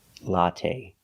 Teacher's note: The last syllable is the long A. It's not stressed, but we use the long A like say and pay. Latte. Make a long sound.